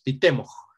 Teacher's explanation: Fíjense que aquí temo tenía una vocal larga, pero cuando va con la glotal, la vocal larga se hace breve